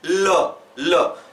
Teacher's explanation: इसके बाद जब आप ल का उच्चारण करेंगे तो आपकी जिह्वा जो है ऊपर तालु से पीछे वाले भाग में चिपक जाएगी · पार्श्व व्यंजन मतलब ऐसा व्यंजन बताइए, पार्श्व का मतलब होता है किनारा, मतलब उसका उच्चारण करते समय आपकी जिह्वा के किनारे किनारे से हवा बाहर निकलेगी। तो आप ल बोलिए, ल।